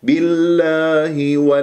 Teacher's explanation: واللام تكون مرققة في اسم الجلال الله لأن مسبوقة بكسر. الاسم اسم الجلال الله إن كان مسبوق بفتح أو ضم تفخم اللام الله، وإذا كان مسبوق بكسر أو ياء ترقق اللام بالله بهذه الطريقة.